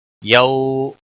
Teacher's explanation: یو واولین ہے تھوڑا نرمی کے ساتھ کھینچ کر ادا کریں گے